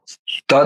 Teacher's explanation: દંત્ય છે દાંતના પાછળના ભાગમાંથી બોલાય છે